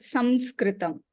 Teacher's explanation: after the Anuswaram, the letter that is following, that is sa, and it does not have a nasal sound to it. Therefore, the Anuswaram remains as sam